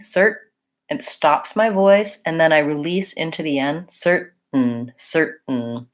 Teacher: And then we're basically not saying this vowel sound. We're using what's called a syllabic N. And so it just kind of sounds like an N